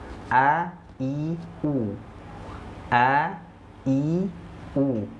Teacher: Makhraj huruf alif itu keluarnya dari tenggorokan bagian bawah, ya. Keluarnya dari tenggorokan bawah bersamaan dengan huruf H.